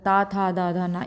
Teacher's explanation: त वर्ग के अंतर्गत त, थ, द, ध ये आ जाएंगे पांचों। इनका उच्चारण स्थान दंत है।